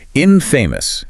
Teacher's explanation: pronunciation stress on the first syllable